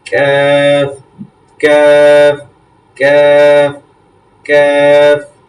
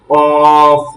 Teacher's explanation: তাহলে কাফটা হচ্ছে পাতলা করে এবং কফটা হচ্ছে মোটা করে